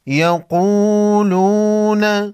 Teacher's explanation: واو مدہ کہلاتا ہے، ایک الف کے مقدار کھینچ کر پڑھیں گے۔